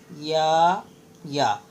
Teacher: یا کا بھی مخرج وہی ہے جو ہم نے الف کا مخرج پڑھا تھا، یعنی جوف دہن، منہ کا خالی والا حصہ